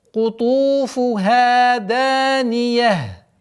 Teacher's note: При остановке та марбута переходит в звук ха, и танвин переходит в знак сукун.